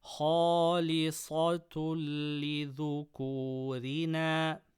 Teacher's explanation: Tanween before lam, idgham without ghunnah. Ra with kasra, empty mouth.